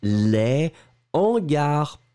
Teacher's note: les hangars pas de liaison entre les deux